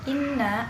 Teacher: Inna adalah bacaan gunnah sebab nun bertasydid